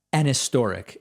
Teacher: historic has a relatively soft h when in context